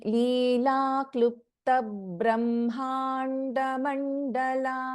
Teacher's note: so here after ಕ್ಲಿಪ್ತ this ಬಾ is getting doubled